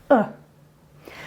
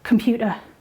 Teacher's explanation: schwa is what we call a central vowel that's the teenager grunt uh and we use it quite often